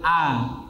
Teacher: A dia termasuk in fitah rahangnya kan menjauh